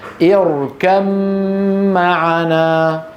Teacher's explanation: فإذا وصلناهما نحول الباء إلى ميم وننطق ميم مشددة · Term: الإدغام